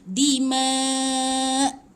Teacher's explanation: Jadi huruf terakhir tu kena matikan. Jadi hamzah bila mati dia bunyi dima'. Ada sikit tapi jangan tolak sangat, nanti jadi ain.